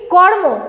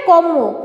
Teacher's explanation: রটা পাল্টে যাচ্ছে, কে পাল্টাচ্ছে? পরের মটা আগে রটাকে পাল্টে দিচ্ছে